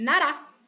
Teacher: quando ela tá entre vogais, tecnicamente, quando ela tá no meio, ela tem som de nosso R normal, de mariposa, por exemplo.